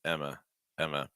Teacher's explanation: Just Emma, Emma, Emma. Schwa sound again. At the end. It's not ah. It's not Emma.